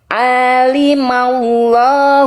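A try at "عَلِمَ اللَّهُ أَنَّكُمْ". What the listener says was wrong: A-nya berapa harokat A-nya? Iya, tadi Bunda baca dua harokat.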